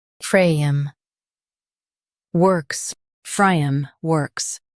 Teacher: Emphasize frame and soften works.